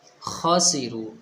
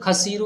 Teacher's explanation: جب ہم تھوکتے ہیں یا ہمارے گلے میں کھجلی ہوتی ہے تو ہم کرتے ہیں وہیں سے ہی خا نکلے گا